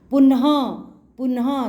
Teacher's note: तो एंड में ना के बाद ह की साउंड आ रही है और हमने विसर्ग लगा दिए हैं, 2 डॉट, ये विसर्ग की मात्रा होती है बेटा।